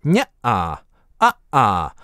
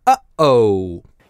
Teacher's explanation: Анатомически, у вас эта пауза возникает, когда вы смыкаете голосовые связки и прекращаете ток воздуха, таким образом резко обрывая гласный. А потом так же резко размыкаете, и начинает звучать следующий гласный. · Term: гортанная смычка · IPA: [əʔə]